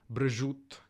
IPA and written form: bɹəˈʒut (ham)